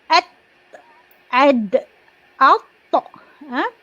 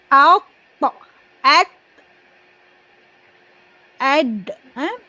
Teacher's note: hujung lidah kita akan menyentuh pangkal gigi kacip bahagian atas. Dia akan sentuh gusi dekat bahagian lelangit, dia bahagian gusi gigi atas.